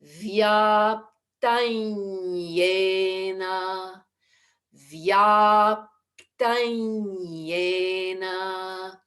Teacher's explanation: the Anusvara Sandhi has us go vyaptanya, moving to the soft palate.